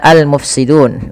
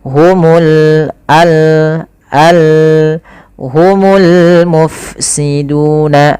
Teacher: alif lam yang kita tulis dan kita baca dengan jelas suara lamnya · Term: alif lam qamariyah